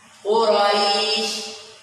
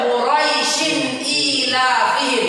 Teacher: Dia hanya memiliki mad ketika waqaf di yang mana setelahnya terdapat sukun arid. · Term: Mad lin